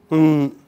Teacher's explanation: It is nasal. It is not oral. Okay. Otherwise, it is voiced. It is continuous. There is no obstruction in the nasal passage, but it is nasal.